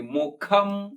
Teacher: ಮು ಖ ಮಹಾಪ್ರಾಣದ್ದು, ಅನುಸ್ವಾರ ಅರ್ಧ ಮ